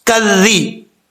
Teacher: ذال جو ہے بغیر سیٹی کے پڑھا جائے گا. اس کا مخرج ہے زبان کی نوک، زبان کا سرا اوپر والے دانتوں کے اندرونی کنارے سے لگے تو ذال پڑھا جاتا ہے.